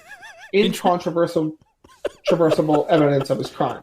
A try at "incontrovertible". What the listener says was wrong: He just inserted an S. Like, that's supposed to be incontrovertible.